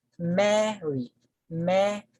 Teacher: So the stress falls on the first syllable, marry.